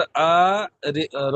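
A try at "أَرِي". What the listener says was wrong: আরি। আ টান হবে না, আরি।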